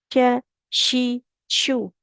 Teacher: Karena kalau ke shin dia nanti keliru juga di makhrajnya. Kalau shin kan dia tengah lidahnya menempel ke langit-langit atas.